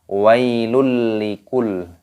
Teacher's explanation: terdapat rumah tanwin yang bertemu dengan huruf lam ini hukumnya dibaca idgham bilagunnah idgam artinya bertemu masukkan bilagunnah tanpa berdengung Jadi dimasukkan tanpa didengungkan